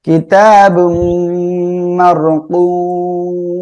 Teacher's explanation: মার এখানে র সাকিন তার ডাইনে জবর মোটা করে পড়বো।